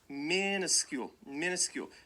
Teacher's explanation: Right, the stress is on the first syllable.